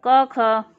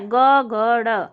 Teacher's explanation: तो पहला दूसरा तो अघोष हो गया, और तीसरा, चौथा, पांचवा जो वर्ण है ये घोष हो गया